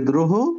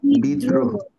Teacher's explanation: তার মানে শব্দের মাঝখানে আসলে দটা ডাবল হয়ে যায়